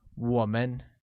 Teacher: pronounced with a falling rising tone